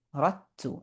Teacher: If you see a dal, there's nothing on it, and we have a ta after it with the shadda, or any letter with the shadda right after it, we're going to skip the dal and go completely to the ta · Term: idgham